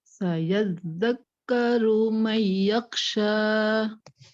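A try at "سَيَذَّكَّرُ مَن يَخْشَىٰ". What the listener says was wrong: Jadi kha-nya itu tetap bergetar. Yakh. Jadi jangan yakhsha, itu terhenti dia. Yakhsha. Sayadzakkaru man yakhsha. Jadi jangan yakhsha, jangan terpotong. Yak, tapi yak. Getarkan apa namanya anak lidah.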